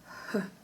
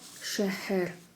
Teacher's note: Татарское Х похоже на русскую Х, но только произносится на придыхании, мягко.